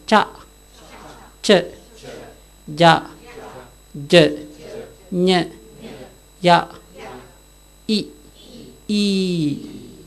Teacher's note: The middle of the tongue touching the upper side. Cha. Not the top of the tongue. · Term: Palatals